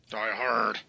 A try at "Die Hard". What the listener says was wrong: You should have hit that R harder. You gotta sound like you're, gargling gravel and that you're like spitting knives. You have the voice of a smoker for 30 years. That's what you need.